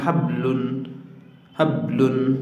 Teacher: কলকলার হরফ যদি শব্দের মাঝখানে সাকিন যুক্ত হয় তখন অল্প পরিমাণ গম্ভীর স্বর আদায় হবে, অল্প পরিমাণ গম্ভীর স্বর আদায় হবে।